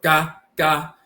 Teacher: So ga, but it's a nasal A. And when you see this particular spelling with the wavy line for the N at the bottom, the G-N, that represents the nasal.